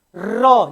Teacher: जीभ ऊपर उठ के कंपन कर रही है, ऊपर उठ रही है जीभ।